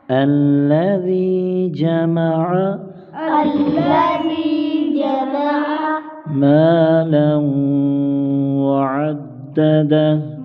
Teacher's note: الذی، ذی پر یا مدہ ایک الف کھینچ کر پڑھیں گے، جمع عین کو گلے سے نکالیں گے